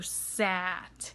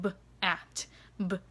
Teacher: i could blend that s because it's a continuous sound right into the a whereas with the stop sound it kind of cuts off before the vowel which makes it harder to blend so you want those continuous